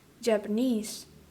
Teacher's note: the primary stress shifts from the final syllable of japan onto the final syllable of japanese